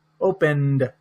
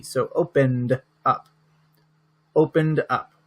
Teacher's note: It's like the N goes to the D.